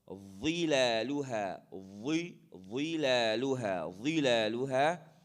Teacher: Number 1, I have to pronounce it from the tip of my teeth, or the tip of my tongue, the edge of my teeth. Okay, and I have to blow, and it's heavy. It has an aw sound. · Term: dha